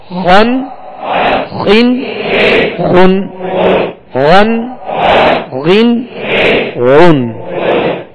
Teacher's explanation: موٹا پڑھیں گے ان کو, اس لیے کہ یہ حروف مستعلیہ میں سے ہیں